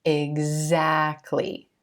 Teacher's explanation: you're going to use the Z or the voiced sounds combination the G and Z